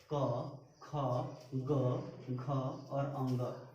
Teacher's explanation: इसका उच्चारण कहाँ से होता है? कंठ से। इसलिए इसको हम लोग बोलते हैं कंठ वर्ण।